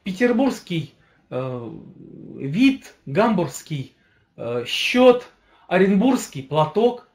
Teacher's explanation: когда я говорю слово Петербургский я букву г не говорю